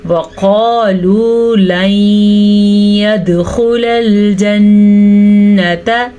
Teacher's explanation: नून का गुन्ना ज़रूर अदा करना है